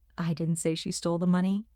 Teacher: The stress on didn't emphasizes that I am denying the act of saying it.